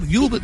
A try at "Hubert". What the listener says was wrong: You keep forgetting the H.